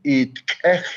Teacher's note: it's not a barred I, or it's not an E sound, it's a eh